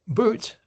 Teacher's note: If I said a word like boot, as into the boot of a car, the tongue is further back, right? And these different configurations can result in different kinds of sets of vowels.